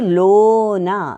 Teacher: లో అనే దానికి దీర్ఘం వచ్చింది గురువు అయింది న అనేది లఘువు